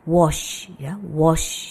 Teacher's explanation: Ketika kita mengucapkan wash itu tidak ada getaran di tenggorokan. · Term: unvoiced